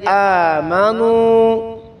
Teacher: واو ساکن سے پہلے پیش آ گئی ہے تو لمبا کریں گے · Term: واو مدہ